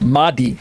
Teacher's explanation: Remember, this word Mahdi can be also seen in, if you do internet searches, Mehdi, or you can hear people just pronounce it as Mahdi. They don't make the H very breathy.